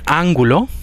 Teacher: en ángulo la n es velar porque aparece antes de la consonante velar